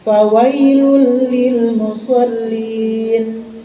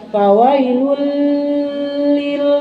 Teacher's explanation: Fawailul, domatain menghadapi huruf lam, hukumnya idgham biguna atau idgham bilaguna? Idgham bilaguna, artinya bilaguna diidghamkan tidak memakai gunnah.